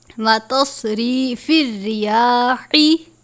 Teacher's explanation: یا کے اوپر کھڑی زبر ہے، الف کے جتنا لمبا کر کے پڑھیں گے · صاد کو بھی پر پڑھتے ہیں کیونکہ صاد بھی حروف مستعلیہ میں سے ہے